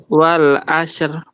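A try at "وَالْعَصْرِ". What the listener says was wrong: Itu masih tipis ra-nya. Tebalkan. Wal asr. Asr. Ya, sad jelas tebal karena dia huruf isti'la. Wal asr. Sad tebal, ra juga tebal. Wal asr.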